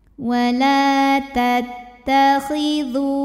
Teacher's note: ini Mad thi'i ziri sebab ada wau sukun sebelumnya baris damah maka huruf Dal ini kita panjangkan dua harakat saja